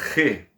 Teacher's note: carro ro né uma letra muito mais gutural uma letra uma uma letra que ela vai ser pronunciada lá no fundo da garganta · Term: letra gutural